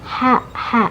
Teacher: Latal ha, hati-hati ada anginnya ya, ha. Nah, tenggorokan bagian tengah ya, makhrajnya ha